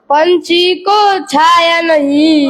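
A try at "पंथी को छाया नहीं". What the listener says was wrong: पंछी को छाया, पंछी नहीं पंथी होता है।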